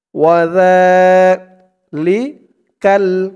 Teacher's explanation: তাহলে ওই পৃষ্ঠার ওখান থেকে যেখান থেকে পড়ব বলছিলাম, খালিদিনা ফিহা খালিদিনা ফিহা, ওয়াও জবর ওয়া, জাল খারা জবর একালিফ টান, খারা জবর, আর এখানে জালের উচ্চারণটা একদম নরম পাতলা করতে হবে। জিব্বার মাথা উপরের দাঁতের মাথার সাথে লাগবে জালের উচ্চারণটা করার সময়